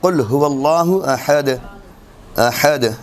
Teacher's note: یہاں پر دونوں تنوین کے دونوں پیش، تنوین نہیں پڑھی جا رہی